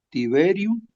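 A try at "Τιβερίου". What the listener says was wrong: otra vez el acento.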